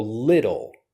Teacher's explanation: But when I'm teaching the pronunciation of this word, I'm using lidl. So the T becomes more of a D sound. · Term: flap T